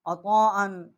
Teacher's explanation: بڑی مد ہے 4 الف جتنا، آواز یہاں ہم نے بلند کی ہے